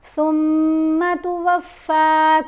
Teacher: سا کو ادا کرتے ہوئے زبان کو آپ نے دانتوں کے درمیان میں رکھنا ہے